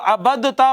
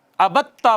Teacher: دال کو تا میں ضم کیا تو تا ہو گئی مشدد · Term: ادغام